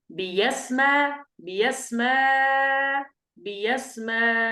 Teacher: نقرأ الأولى بالإبدال ونقرأ الثانية بالإبدال لكن ألفا، فنقول بيسمى بيسمى بيسمى، هكذا.